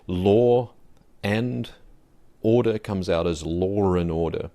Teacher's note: is inserted so for example in my speech I do this Law and Order comes out as lore in order so I stick a r in there